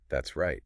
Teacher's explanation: Or often we squish it together and say that's right. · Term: contractions